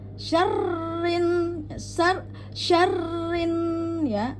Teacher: Jadi tahan di nun wajib gunah ya. Jadi wajib didengungkan ya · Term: nun bertasdid